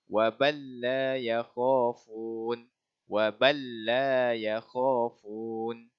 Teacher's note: Lam sakinah, lam mati bertemu dengan huruf lam. Lam mati bertemu dengan lam yang berbaris. Jadi baca dia kita kena idghamkan ke dalam huruf lam yang berbaris. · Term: idgham mutamathilain